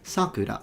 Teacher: But it actually depends, because the pitch accent will differ whether you're using the word to mean cherry blossom or name of a child. If it's a name of a child, it's sakura, so high to low. But if it's the cherry blossoms, is sakura, the opposite, sakura.